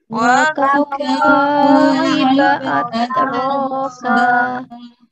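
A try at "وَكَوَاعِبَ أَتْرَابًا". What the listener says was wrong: Huruf ainnya jangan lupa.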